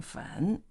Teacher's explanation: in the third tone falling rising